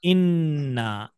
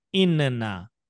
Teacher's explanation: इन ना को हम बोलेंगे इन्ना, उसी नून को खींच देंगे आगे, इन्ना। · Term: तशदीद